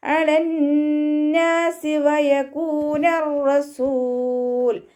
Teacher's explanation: വാവ് ഉച്ചരിക്കുന്ന സമയത്ത് ചുണ്ടുകളൊന്ന് വട്ടത്തിൽ പിടിച്ചു കൊടുക്കുക · നൂനിന് ശ്രദ്ധ വന്നു. ഉന്നനാണ്, നന്നായിട്ട് മണിച്ചു കൊടുക്കുക. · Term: അഖ്മൽ ഉന്നനാണ്